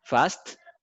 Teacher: Usted me está diciendo fats, me está pronunciando la T primero antes que la S. Y es la S antes de la T.